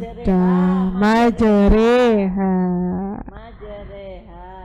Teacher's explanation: Imala adalah pengucapan fathah yang miring ke kasrah. Ya, secara bahasa imala berarti condong atau miring. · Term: imalah